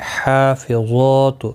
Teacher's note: ہا اور ظا کے اوپر کھڑی حرکات ہے، ایک ایک الف کی مقدار کے برابر کھینچ کر پڑھیں گے. ظا حروف مستعلیہ ہے، پر پڑھنا ہے.